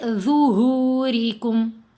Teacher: lips کو round shape میں کھولیں گے تو یہ آواز موٹی پیدا ہوگی، نرم بھی ہے موٹی بھی ہے